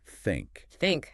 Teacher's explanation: and blow air No voice, just air, like a soft F, but with tongue there. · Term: the voiceless one